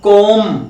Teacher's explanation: it is कॉम, B silent here, कॉम, इसमें बी का sound नहीं होता है